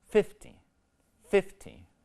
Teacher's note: stress in these two words are is on a different syllable in the word 50 the stress is on the first syllable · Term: word stress